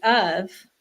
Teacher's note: word like of, which doesn't follow any rules, the F sounds like a V and the O is a U, a short U